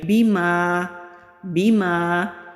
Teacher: میم کے اوپر زبر ہے، آگے خالی الف ہے، الف مدہ ہے، ایک الف کے برابر کھینچ کر پڑھیں گے۔ یہاں پر ایک چیز غور کرنے والی ہے، بعض لوگ پڑھتے ہوئے بما پڑھتے ہیں، تو ماں کرتے ہوئے میم کی آواز ناک میں چلی جاتی ہے، تو ناک میں آواز نہیں جانی چاہیے، آواز منہ سے سیدھی نکلنی چاہیے۔